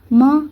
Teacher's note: म आप देख रहे हैं हमारा ओठ जो है आपस में चिपक रहे हैं